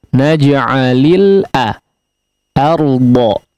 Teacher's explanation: Namun di huruf hamzah ya, perhatikan jangan sampai ikut menebal or ya, jangan menjadi o, tapi silakan sempurnakan untuk harakat fathahnya a